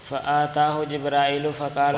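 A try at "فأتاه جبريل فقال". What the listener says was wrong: آتاہ نہیں فاتاہ، جبرائیل آیا آپ کے پاس جبریل.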